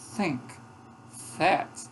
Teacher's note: Então esses sons aqui, ó, este som é uma constritiva interdental. O modo de articulação dela é constrição, é um aperto nos articuladores, de modo que o ar passa espremido, esse é o modo de articulação, e o ponto de articulação entre os dois dentes.